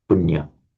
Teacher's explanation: So the y is pure consonant as punya. In Pali, the merger of the n and the y creates a double nya. So in Pali, it is nya.